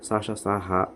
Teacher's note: గాలిని బయటకు ఊదుతూ పలికినటువంటి అక్షరాలు స షా హ ఊష్మాలు